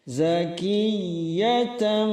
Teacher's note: tam itu iqlab, berubah menjadi suara huruf mim